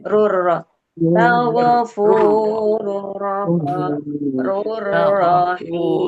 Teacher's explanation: Idgham maksudnya rurro ya, idgham bila guna. Ya, Idgham bila guna. Tanpa disertai dengung ya.